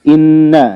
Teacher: Makhrajuha, dia tempat keluarnya adalah rongga hidung. Gunnah itu dengung.